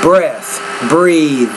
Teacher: this is a inter dental voiced and voiceless consonant